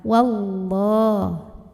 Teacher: Dan di atasnya ada tanda waqaf namanya al-waqfu aula, artinya berhenti lebih utama. Wallah, lam jalalahnya dibunyikan secara tafkhim karena huruf sebelumnya yang waw barisnya di atas, maka bacanya ditebalkan. Wallah. Kemudian alif lamnya namanya alif lam syamsiyah karena alif lam yang bertemu dengan huruf syamsiyah yaitu lam, maka alif lamnya kita lewat.